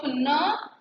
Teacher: Vocal cords vibrate. So the three-term label for N is voiced, alveolar, nasal · In case of ma, it is blocked at the lips. In case of na, it is blocked at the teeth ridge because the tip of the tongue makes a contact with the teeth ridge.